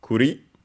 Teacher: First, we have it's a compound from Kuri, accented on the last syllable on its own